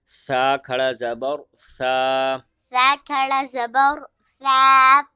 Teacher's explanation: سا کے اوپر کھڑا زبر ہے، ایک الف کی مقدار کھینچ کے پڑھیں گے۔